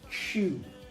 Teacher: CH and J are strongly labialized. That means that when you pronounce CH, your mouth is very rounded